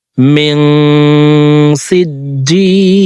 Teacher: মিন এখানে ইকফা গুণনা, কারণ নুন সাকিনের পরে ইকফার 15টি হরফ থেকে একটি হরফ সিন আসছে, এই কারণে নুন সাকিনকে নাকের ভিতরে লুকাইয়া গুণনার সহিত পড়ব।